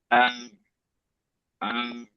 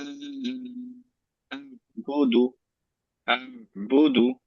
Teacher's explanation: তার মানে আমরা ট্রাই করব এভাবে স্টপ করার। আহ, আহ, আইনের সাউন্ডটা একটু কন্টিনিউ হয়ে তারপর স্টপ হবে, একদম শার্প স্টপ না, একটু কন্টিনিউ হয়ে স্টপ হবে।